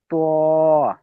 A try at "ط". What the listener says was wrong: ঠোঁট কিন্তু গোল হচ্ছে। কথা বলার ক্ষেত্রে ঠোঁট গোল হচ্ছে, ঠোঁট গোল হবে না।